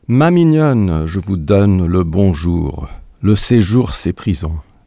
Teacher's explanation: If you want to exactly capture the structure of the poem in a translation, you should keep it at 28 lines, with each line having 3 syllables, stress the last syllable of that line, and make sure every pair of lines rhyme.